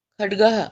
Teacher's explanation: चमस में है क्या में नहीं ख डग हम ख डग ड में ह नहीं आना चाहिए